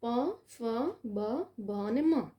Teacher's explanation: ત્યાર પછી પ ફ બ અને મ તમે બોલો તમે જાતે પણ બોલી જશો તો બંને હોઠ એકબીજાને સ્પર્શે છે એટલા માટે એને ઓષ્ટ્ય પ્રકાર કહેવામાં આવે છે